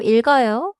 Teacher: 읽어요에서는 리을 소리가 앞 음절에 남고, 기역 소리가 어로 이어져요.